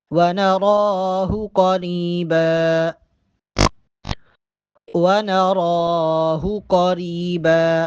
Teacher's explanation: ونراہ را کے اوپر کھڑا زبر ہے، را کو ایک الف کے برابر لمبا کر کے پڑھیں گے